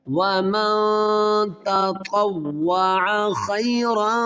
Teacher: فلا جناح علیہ ان یطوف بہما، ومن، یہاں پر غنہ ہوگا، اخفا غنہ ہوگا نون ساکن کے بعد حروف اخفا میں